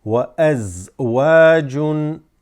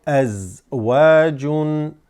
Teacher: Notice the waw is extended.